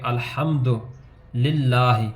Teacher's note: آپ دیکھیں گے کہ ہم نے پہلا پڑھا تھا جو رول کے زبر زیر پیش کو لمبا نہیں کرتے، تو آپ دیکھیں کہ الحمد دال کے اوپر پیش ہے تو اس کو لمبا نہیں کریں گے